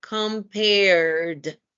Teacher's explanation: We omit the E and sound the D.